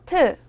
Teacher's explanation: 트는 드를 소리낼 때와 같은데요 보다 바람을 더 많이내는 소리예요